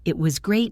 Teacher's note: When you say it was great, notice how my voice goes up and down. It is not flat. If you say it was great in a flat voice, you sound sarcastic or bored.